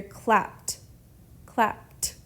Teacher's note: this e d we pronounce it like a t